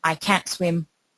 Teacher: they will not always hear the T in I can't swim